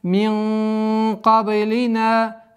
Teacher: Здесь у нас ихфа твердая в размере двух огласовок. Удерживаем сокрытие. И в конце долгота в размере двух огласовок.